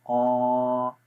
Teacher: یہ بھی ہم نے اس کا مخرج پڑھا تھا کہ زبان کی جڑ جب تالو کے نرم حصے پہ لگائیں تو قاف پڑھا جائے گا